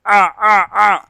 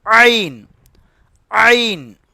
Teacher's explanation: பா லா ஐன் இந்த எழுத்தை கொஞ்சம் முயற்சி பண்ணி நம்ம சொல்லணும் சரிங்களா அலிஃபுக்கும் இந்த ஐனுக்கும் உச்சரிப்பு வந்து வித்தியாசப்படணும் ஐன் தொண்டையிலிருந்து வரணும்